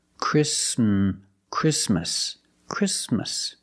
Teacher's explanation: Sound exactly exactly or the word Christmas we don't say Christmas the t is between con so it is silent link the sound s with the m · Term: the T is silent